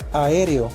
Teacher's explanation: llamado hiato, que es cuando las vocales más que unirse se cortan